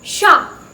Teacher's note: நம்ம இங்கிலீஷ்ல church னு சொல்லுவோம்ல, அந்த ch sound இல்லாம it's a sh sound